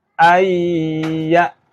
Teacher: Maka huruf nun ini masuk kepada huruf ya. Jadi nun matinya nggak terbaca. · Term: idgham